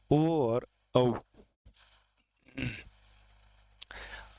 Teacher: ओ और औ कंठोष्ठ्य है, क्योंकि इनका उच्चारण जो है वो कंठ से होता है।